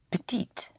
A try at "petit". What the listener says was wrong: Again, I repeat, the consonant at the end of a word is not sounded unless it is followed by an E. I spell again, P-E-T-I-T. And always go to the ending, yes? Hit the ending.